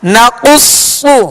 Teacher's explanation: قاف اور صاد دونوں حروف مستعلیہ میں سے لہذا پوری یعنی موٹا پڑھیں گے